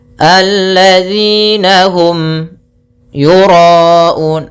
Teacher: ada mim mati bertemu ya, kita namakan dengan bacaan izhar syafawi, yaitu suara mimnya harus dibaca dengan jelas tanpa ditahan